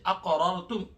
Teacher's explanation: یہاں قاف ہے جو کہ حروف قلقلہ میں سے خوب طریقے سے قلقلہ کیا جائے گا